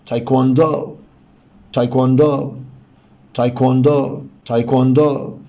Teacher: آخر حاجة لازم أخلي بالي إن الاسترس هنا على المقطع الأخير، يعني من أول الدي الاسترس على إي، يعني استرس يعني بعلي صوتي وبطول فيها، فبالتالي هتبقى بالمنظر ده تايكواندو تايكواندو تايكواندو تايكواندو.